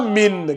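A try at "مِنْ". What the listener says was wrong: Quand tu dis min, là, tu as prononcé clairement.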